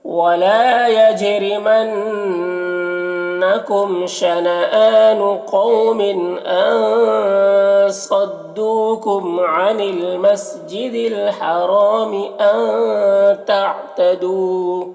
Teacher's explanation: صدو میں صاد کو پر پڑھیں گے، حروف مستعلیہ میں سے